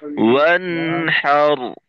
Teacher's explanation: ওয়ান গুন্নার মতো করে একটু সময় থাকবো। ওয়ানহার, وانحر রয়ে একটু সময় দিতে হবে যেন হুম?